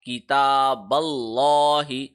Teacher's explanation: کتاب اللہ، اچھا تا کے اوپر کھڑی زبر ہے، دوبارہ اس کو 1 سیکنڈ لمبا کیا، تا، کتاب اللہ، با باریک ہوگا لیکن اللہ کا لام موٹا ہو گیا کیونکہ اللہ کے لام سے جو پچھلا حرف ہے یعنی با، اس پہ زبر آ رہا ہے، لہٰذا اللہ کا لام موٹا پڑا جائے گا۔